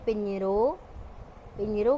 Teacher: Number 10 ñے، ñے، یہ حرف جیم کے کنبے کا ہے اور سندھی کا خالص حرف ہے جو کہ اردو میں استعمال نہیں ہوتا۔ اس کا تلفظ نون غنہ اور جیم کے برابر ہے۔